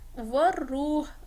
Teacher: मिल जाएगा ना उसका साउंड, सुर रब्बुल मलाइकती मलाइकती, वर रूह, रॉ पर कपाहट है, वर रूह जैसे वाइब्रेशन से होती है, हल्की सी वाइब्रेशन , वर रूह, आखिर में हा का साउंड आया है जो